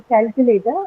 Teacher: first syllable is the one that is stressed